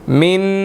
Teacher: नून साकिन आ गया, यहाँ पर हमने इख्फा करना है, मुंह में आवाज़ जाएगी